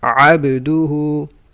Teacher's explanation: Ayn from mid of the throat.